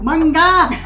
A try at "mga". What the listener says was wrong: Mga. Just silent G-A. Mga. Not manga.